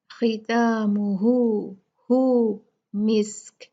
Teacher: یہاں ہم نے ہا کو دو کاؤنٹ کھینچنا ہے